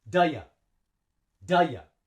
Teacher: when we link function words together, we only breathe 1 time because we say duh ya like one word. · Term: linking